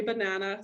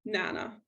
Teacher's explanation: deleting a weak syllable in a multi-syllable word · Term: unstressed syllable deletion